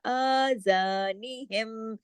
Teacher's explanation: आ के ऊपर देखिए जो खड़ी जबर है एक अलिफ के बराबर खींचेगा